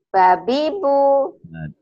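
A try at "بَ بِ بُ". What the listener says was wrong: Jangan, Jangan dipanjangin ya, Bu ya. Babi, Bu.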